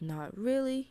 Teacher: the really will go down